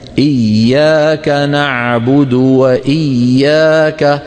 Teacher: ندغم الياء في الياء ولا نقطع صوتها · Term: إدغام